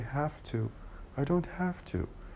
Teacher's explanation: In connected speech, when we say such an expression in a very fast speech, the ve will be turned into fe. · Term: assimilation of voice